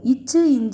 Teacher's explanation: இச்சு இஞ்சு பாத்தீங்கன்னா இடைநா நடு அண்ணத்தை தொடும்.